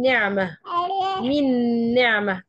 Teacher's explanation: النون ساكنه وراها نون فعندي هنا غنه الغنه دي بتاعه مين بتاعت النون الثانيه وليست النون الاولى بتاعه · طب لما باجي أقول من نعمة، من نعمة، أنا عندي هنا غنة، النون ساكنة وراها نون، فعندي هنا غنة